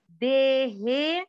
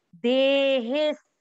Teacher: हे को खींचा भी सही और हे को खींचते हुए उसमें आधा स बोल दिया